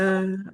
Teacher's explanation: Nah, di sini selain bertasdid, lamnya harus panjang. Fathah bertemu alif.